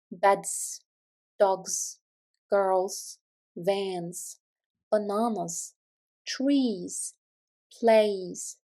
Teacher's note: the plural '-s' must be pronounced as a vibrating /z/ sound